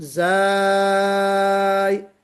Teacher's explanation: اس میں بھی 6 حرکت کے برابر مد ہے، مد لازم، زا، زے تو پڑھیں گے جی نہیں، زے تو اردو میں ہوتا ہے، زا بھی نہیں پڑھیں گے۔